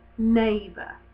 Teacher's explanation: because the N is such a nasal consonant that the end does steal some of the sound neighbor because it's produced up here in the naval cavities but